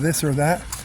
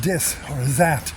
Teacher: He refuses to stick his tongue between his teeth.